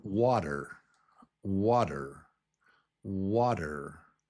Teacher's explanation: the first syllable is wa, it's up here, wa, stressed. And then the second syllable is der. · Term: strong syllable